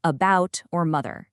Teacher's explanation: super relaxed, neutral uh sound you hear in words like about or mother. In a stress timed language like English, all those unstressed vowels just naturally reduce down to the sound. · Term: the schwa